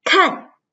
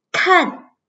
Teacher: bật hơi và thanh 4